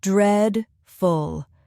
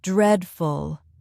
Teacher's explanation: It has two syllables. Dreadful. Stress on the first syllable. Dreadful. Repeat after me.